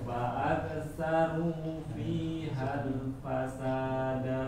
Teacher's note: Iya, da-nya yang nggak boleh panjang, sa-nya panjang.